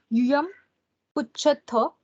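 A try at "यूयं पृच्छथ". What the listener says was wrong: Pruchatha. I think you quickly realize that you are not pronouncing the Mahaprana early and you repeated in the correct way afterwards.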